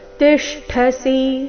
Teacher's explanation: ಇಲ್ಲಿ ಟ ಬೇಡ ಠ ಮಹಾಪ್ರಾಣ ರಸ್ವ